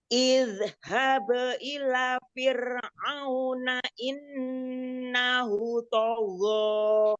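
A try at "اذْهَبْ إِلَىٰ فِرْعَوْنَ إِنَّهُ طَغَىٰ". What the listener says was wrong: Ya, la-nya 2 harokat. Innahu 2 harokat. Mat silahnya.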